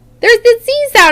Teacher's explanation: when you turn your voice on with the S sound you get a Z sound